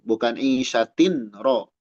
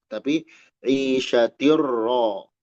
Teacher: Idgham bi ghairi gunnah. Tanwin menghadapi ro. Isyatir ro langsung.